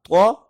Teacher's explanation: زبان کی نوک ہم اوپر والے دانتوں کی جڑوں سے لگائیں گے